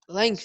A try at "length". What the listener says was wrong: G here is silent. G here is silent. So it's called by length directly. Not lenges, like you said. Length. This one is called by length because G here is silent. G here, is silent.